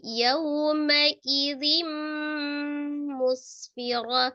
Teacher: Ta marbuthah yang disukunkan menjadi bunyi huruf ha sukun ya.